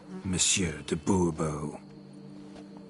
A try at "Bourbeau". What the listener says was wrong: The emphasis falls on the last syllable. Bourbeau?